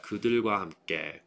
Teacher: 들 is going to be voiced as well as 함께, so it's much softer